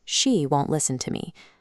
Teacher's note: Placing a hard, distinct vocal stress on the word she.